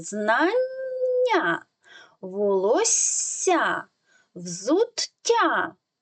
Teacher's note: що у цих словах перед буквою я ідуть дві однакових букви таке злиття називається подовження приголосних тому їх потрібно трішечки протягувати